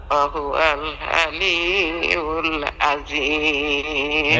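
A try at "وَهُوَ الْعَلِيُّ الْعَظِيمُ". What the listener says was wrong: এই তো হইছে, মাশাআল্লাহ।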